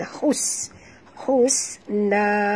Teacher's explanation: Bunyikan safir pada sin.